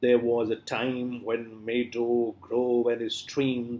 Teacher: So we have 5 feet means 10 syllables, means pentameter. And when you recite it, then first is unstressed, second is stressed. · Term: iambic pentameter